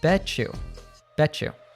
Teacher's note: when a T and Y are together, they often morph into a ch sound. So bet you becomes bet you, bet you.